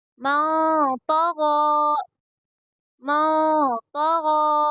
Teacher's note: غین کے اوپر کھڑا زبر ہے اس لیے اس کو تھوڑا کھینچ کر پڑھیں گے